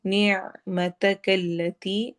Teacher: عین کی آواز کو گلے میں حلق میں ٹھہرانا ہے